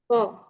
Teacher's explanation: ক উচ্চারণ করার আগেই জিব উপরের তালুর সাথে কিন্তু লেগে যায়